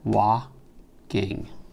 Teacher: end on a strong syllable to carry the rhyme that has the strong syllable on the penultimate syllable in other words on the second-to-last syllable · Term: feminine ending